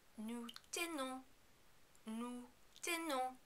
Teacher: be careful not to overpronounce the final N and don't pronounce the final S at all. This is because it is not followed by a vowel.